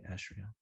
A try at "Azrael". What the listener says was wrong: Yeah, it's with more of like a Z sound, but if you want to say it with